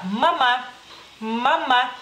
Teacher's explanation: es otra consonante sonora, también es bilabial y nasal. Bilabial porque simplemente se juntan los labios al pronunciarla, M, M.